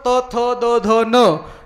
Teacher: जीभ दाताला अडकली तरच त, थ, द, ध, न या वर्णाचा उच्चार व्यवस्थित होतो